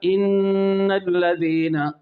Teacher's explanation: نون مشدد کا غنہ ایک الف ہم نے کرنا ہے، ان الذین، ذین میں ذال میں زبان کی نوک اوپر کے دانتوں کے کنارہ سے نرمی سے لگانا ہے، اور ذین میں جو یا ہے یہ یا مدہ ہے، اس سے پہلے ذال کے نیچے کیا ہے، زیر ہے۔